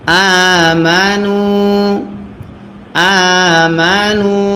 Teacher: মিম জবর মা, আমা, নুন ওয়াও পেশ নু, পেশের বামে ওয়াও সাকিন যদি হয় এক আলিফ টানতে হয় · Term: মাদ্দে আসলি